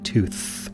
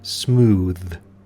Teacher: it's like the rough hissing sound in tooth but then you also have th as in the word smooth which just sort of makes a hum not a scratch · one makes a hissing sound one makes a humming sound